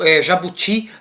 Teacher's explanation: a palavra jabuti ela não tem um acento a sílaba forte dela é ti